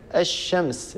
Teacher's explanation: لاحظوا لم يبقى أثر للام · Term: الإدغام الشمسي